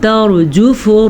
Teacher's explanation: را کو پر پڑھنا ہے کیونکہ را ساکن ہے اور را سے پہلے زبر ہے۔ را میں ادھر راجفہ میں بھی را کو پر پڑھنا ہے۔